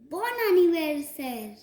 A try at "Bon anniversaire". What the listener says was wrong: Correct. That's perfect.